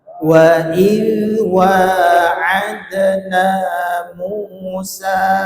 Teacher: Wa idh wa, jangan diputus, jangan wa idh wa'adna, tapi mengalir terus suaranya. Itu huruf zal yang merupakan huruf rokhawah.